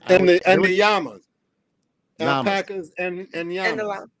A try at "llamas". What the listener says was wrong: I think you got to pronounce the L.